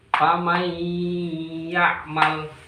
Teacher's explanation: Idgham bi gunnah memasukkan dengan dengung. Huruf nunnya kita masukkan ke ya. Setelah dimasukkan harus dengan dengung.